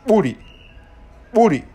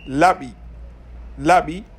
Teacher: une consonne biliale, c'est-à-dire dont l'articulation est réalisée par rapprochement des deux lèvres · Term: implosives